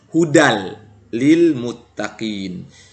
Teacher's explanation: maka tanwinnya tidak terbaca melainkan kita masukkan ke huruf lam menjadi hudal Lil Muttaqin ini yang disebut dengan Idgham bilagunnah Adapun